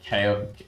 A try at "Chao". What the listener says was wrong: Chow. Yeah, I think they're called Chows. Although I would totally understand why you would think that pronounced KO because of the fucking Chaos Emerald.